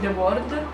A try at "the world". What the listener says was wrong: In the world, non dai la pronuncia british, the world. The world, la pronuncia americana magari.